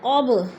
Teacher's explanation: من قبل، نون ساکن کے بعد قوف آ گیا تو ادھر اخفا ہو رہا ہے، آواز کو ناک میں چھپا کر پڑھیں گے۔ قب، با ساکن حروف قلقلہ میں سے ہے تو قلقلہ کریں گے